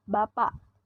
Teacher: direalisasikan sebagai bunyi hamzah apabila berposisi sebagai koda pada sebuah silabel